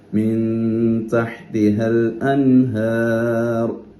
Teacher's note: തഹ് ഹ ആണ് തൊണ്ടയുടെ മധ്യത്തിൽ നിന്ന് വരണം.